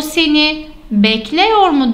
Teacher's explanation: ünlülerim buradaki haliyle genişti şu anda daraldı gibi düşünebilirsiniz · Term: daralma